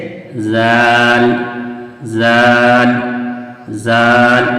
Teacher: तो वही जाल का मखरज है जुबान की नोक और सना औलिया का किनारा कैसे जाल जाल जाल ये अब ये दोनों दोनों को भी देखते हैं तो दोनों की बनावट सेम है।